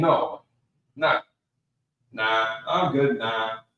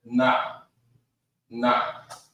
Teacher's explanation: you're not pronouncing that h in it it's kind of just an extra breath at the end of it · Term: silent pronunciation